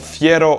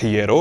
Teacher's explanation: Le son f [f] en vieux castillan devient h [h] (puis [∅]) en début de mot, mais il est maintenu en judesmo. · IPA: /ˈfje.ro/